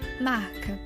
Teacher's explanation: seu lugar de articulação é classificado como velar pois a parte posterior da língua entra em contato com o palato mole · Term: fricativas velares